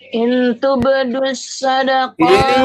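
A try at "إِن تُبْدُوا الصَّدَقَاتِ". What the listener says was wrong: Ini tetap ikhfa, harus tetap ikhfa, jangan dibuang, jangan dilepas.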